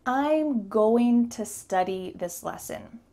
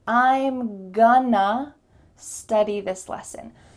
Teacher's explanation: So our first most common reduction is to say, I'm gonna study this lesson. Going and to together make gonna. The word to changes into just a.